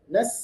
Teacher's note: Sinnya harus sukun dibaca jelas ada haesnya.